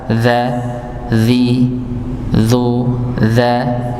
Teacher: Ujung lidah bertemu dengan ujung gigi seri atas. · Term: dzal